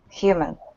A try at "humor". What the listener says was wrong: Humor. It sounds like you're saying human.